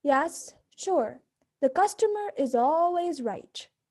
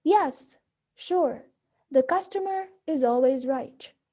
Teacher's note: boredom, sarcasm, and disinterest often use a fallen intonation. For example, the sentences here would sound very sarcastic when said in a low pitch.